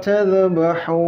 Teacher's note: Anya ditahan ya, panjang dengung karena bertemu dengan huruf ikhfa samar.